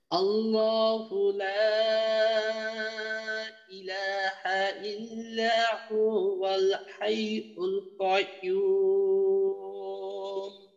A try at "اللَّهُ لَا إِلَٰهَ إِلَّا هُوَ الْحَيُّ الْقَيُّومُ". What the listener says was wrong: আচ্ছা, হুর মাঝে একটু টান হয়ে গেছে, হু ওয়াল না, হুয়াল একসাথে, হুয়াল। আচ্ছা ঠিক আছে, এইটা খেয়াল করবেন যেন হুর মাঝে টান হয়ে না যায়।